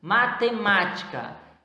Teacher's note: Matemática, proparoxítona. Vocês percebem a respeito que é a antepenúltima sílaba mais forte, que é o ma, então é proparoxítona.